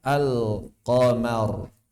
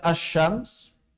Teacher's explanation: Makanya ketika bertemu bulan, lamnya jelas. Ketika bertemu matahari, lamnya nggak ada, nggak tampak. Langsung huruf mataharinya yang disebut. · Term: idhar